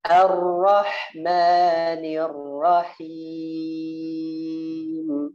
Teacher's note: Ingat ra-nya naik ke atas dalam keadaan tebal, fathah atau dhammah. Nah, ketika ra-nya keduanya diringankan getarannya.